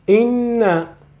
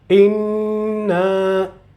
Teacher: So noon with shadda means noon consonant and noon with vowel. On the noon with consonant, you need to hold.